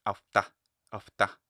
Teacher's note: But if you wanted to rise or wanted to add some stress to the, maybe if you keep it the same pitch, afta, afta, so the ta is louder, the ta is stressed.